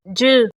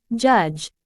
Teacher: the sound ju in the word judge similar to this sound begins with a complete closure of the vocal tract followed by a slow release with frication in this case the closure is made with the tongue against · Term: africat